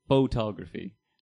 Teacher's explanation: you just say photography with that incredible emphasis on the first syllable